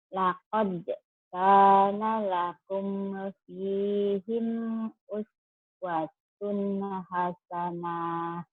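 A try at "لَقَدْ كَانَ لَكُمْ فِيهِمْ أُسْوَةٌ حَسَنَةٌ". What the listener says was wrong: Hasanah pendek ya. Hasanah. Ya, kumnya idhar sapawi. Lakum fihim idhar. Pi-nya panjang. Fihim. Uswatun. Uswatunnya pendek. Fi-nya panjang. Laqad kana lakum fihim uswatun hasanah. Laqad kana lakum fihim uswatun hasanah.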